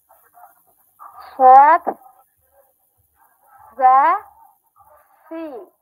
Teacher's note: উচ্চারণ করতে হবে শীষ দিয়ে